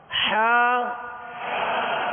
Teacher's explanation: ہا وسط حلق سے، درمیانے حلق سے